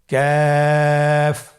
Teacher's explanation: কাফের মাখরাজ হলো জিহ্বার গোড়া থেকে একটু আগে বাড়িয়ে তার বরাবর উপরে তালের সঙ্গে লাগিয়ে উচ্চারিত হয়।